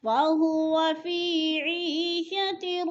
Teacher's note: فَهُوَ فِي عِيشَةٍ, پہ یا مدہ, یا ساکن سے پہلے عین کے نیچے زیر ہے تو یا مدہ ایک الف کے برابر کھینچ کر پڑھنا ہے, یعنی یا مدہ کو کھینچ کر پڑھتے ہیں.